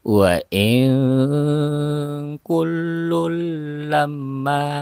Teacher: Jadi tanwinnya tidak terbaca ya, langsung masuk ke dalam huruf lam, namanya idgham bila guna.